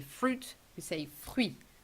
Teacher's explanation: Fruit written like in English, but we do pronounce the I and we do not pronounce the final T